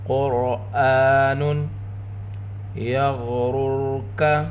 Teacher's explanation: غین کو پر پڑھیں گے، غین حروف مستعلیہ میں سے ہے۔ پہلی را کے اوپر پیش، را پر ہوگی، دوسری رائے ساکنہ، رائے ساکنہ سے پہلے پیش، یہاں پر دونوں را پر پڑھی جائیں گی۔